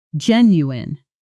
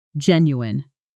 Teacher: The tricky part is the ending, which looks like it should sound like you-een or you-en, based on spelling, but actually collapses into a quick un